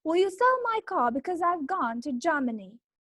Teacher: there is a beat on the stressed words for this reason we say my more slowly and because i have gone more quickly · the four keywords sell car gone germany are accentuated they are stressed